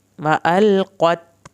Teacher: व इज़ल अरज़ु मुद्दत व अलक़त, कॉफ को ने पुर करके पढ़ना है। व अलक़त, कॉफ को पुर करके पढ़ना है, ता को नहीं हिलाना